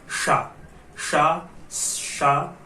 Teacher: जब हम बोल रहे हैं तो अपने बोलने के ढंग में जीभ से पूरा तालू जो है वो ढक देंगे और शा का उच्चारण करेंगे। जब ढकने की बात करेंगे तो जो उच्चारित होगा वो तलव्य शा होगा।